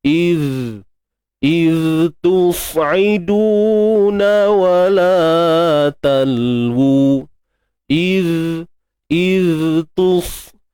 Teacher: huruf zal yang sukun ini kita matikan macam biasa. Cuma pastikan hujung lidah kita dikeluarkan sedikit.